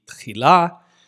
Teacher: it often has an ah vowel, a long a vowel, and is marked with a hey vowel letter.